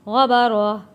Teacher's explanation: گول تا کو وقف میں ہا میں تبدیل کر دیں گے